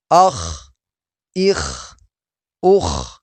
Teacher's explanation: خا حروف مستعلیہ میں سے ہے، موٹے حروف میں سے ہے، اس کو خوب موٹا کر کے پڑھیں گے